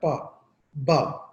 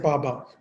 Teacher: जैसे पा, जैसे पा साउंड है, पा, बा, ये दोनों साउंड में आप देखें कि दोनों लिप्स आपके पहले क्लोज होते हैं, हवा ब्लॉक की जाती है और सडनली एक इम्प्लोड की जाती है एकदम से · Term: plosives